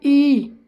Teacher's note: ई के करते वक्त जो आपकी जीभ है आगे का भाग वो हल्का सा बैंड हो रहा है, पीछे को दब रहा है और ये चौड़ा हो रहा है। मध्य भाग क्या हो रहा है, मध्य भाग में चौड़ा हो रहा है। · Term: अग्रभाग